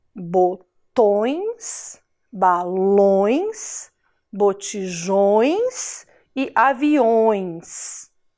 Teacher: o tio indica som nasal, o som que sai pelo nariz. É como se a gente falasse com um tom fanhoso, assim, certo?